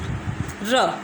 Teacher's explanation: Then र, air escapes through the central part of the mouth, इधर the tip of the tongue is curled back behind the alveolar ridge और the top of the tongue is बंच्ड up behind the alveolar ridge.